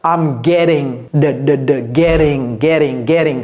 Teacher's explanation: I'm getting. Getting. C'est un T, un D soudé.